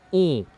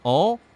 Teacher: On, we have to close more the mouth to say it. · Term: another nasal